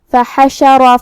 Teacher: کلمت فحشر میں یہاں حرف الحا کو ہم حلق کے درمیان والے حصے سے ادا کریں گے، جو کہ پورے کلمہ پہ زبر ہے، تو ہم یہ سب حرکات کو برابر سے ادا کریں گے، کسی ایک کو کم نہیں کریں گے.